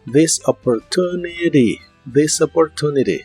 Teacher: la última t de opportunity en inglés americano se suele pronunciar como r